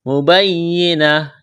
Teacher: بفاحشۃ مبینہ، مبینہ، یا میں سختی کریں گے، وقف کریں گے، گول تا کو ہا سے تبدیل کرنا ہے